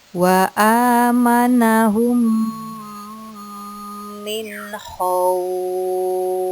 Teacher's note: Kita bisa melihat ada mim sukun bertemu huruf mim. Ini dinamakan idgham mitlain. Dibaca dengung.